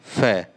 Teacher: फै को जब प्रोनाउंस करते हैं तो वो बिल्कुल होठ से उसकी आवाज़ निकल रही है। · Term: ओष्ठ्य ध्वनि